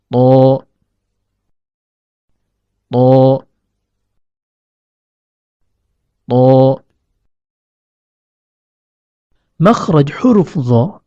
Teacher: huruf tho keluar dari ujung lidah yang bertemu dengan pangkal gigi seri atas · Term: huruf to